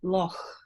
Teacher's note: I use a velar fricative there. I say loch. And so I don't explode that sound out. I hiss it out. It's a fricative for me. So therefore, if I were transcribing Loch Ness, I would transcribe it differently from you, because transcription is about the transcriber.